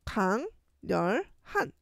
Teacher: 이응과 리을이 만나면 리을이 니은으로 바뀌어. 그래서 강렬한 이렇게 바뀌는 걸 기억을 해야 돼요.